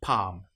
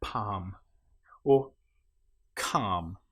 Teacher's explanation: the L you will notice is not pronounced at all